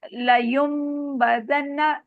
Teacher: जब भी नून साकिना के बाद आप देखें कि बा आ रहा है, नून साकिना के फौरन बाद नेक्स्ट लेटर जो है वो बा है, तो ये रूल है, नून की आवाज जो है वो बदल जाती है मीम में। ठीक है, नून की आवाज बदल जाती है मीम में, तो फिर हम नून नहीं पढ़ते बल्कि हम मीम पढ़ते हैं। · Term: इकलाब